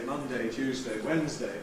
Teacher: We can either keep it strong and say, ‘Monday’ [ˈmʌndeɪ], ‘Tuesday’ [ˈtjuːzdeɪ], ‘Wednesday’ [ˈwenzdeɪ]